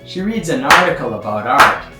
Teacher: there's a long section of weakly stressed, quite rapid words at the beginning, and the first strong stress is article. The second strong stress is art.